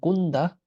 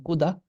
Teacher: I'm not saying kuda, because in theory this should be a nda. This is not just da; it's a prenasal nda.